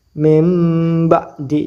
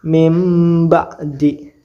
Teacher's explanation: jadi suara bnya enggak ada diganti menjadi mim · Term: iqlab